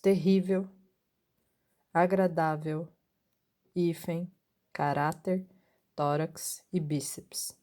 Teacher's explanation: a penúltima sílaba é acentuada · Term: paroxítonas